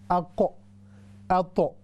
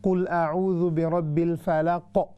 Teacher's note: कौफ है तो उस पर कलकला हैवी होगा, मोटा होगा। अगर तो है तो फिर भी उस पर कलकला मोटा होगा।